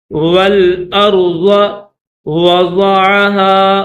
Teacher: یہ جو واو ہے اس واو کو لام کے ساتھ ملائیں گے اور حمزہ کو را کے ساتھ ملائیں گے، ضاد کو موٹا کر کے پڑھیں گے، اسی طرح را کو بھی موٹا کر کے پڑھیں گے.